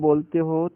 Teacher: आ जब बोलते हो तो आपका मुंह पूरी तरह से खुल जाता है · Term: विवर्त